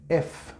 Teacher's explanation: okay this sound the sound right when i produce this sound i use my lower lip and my upper teeth right to obstruct the air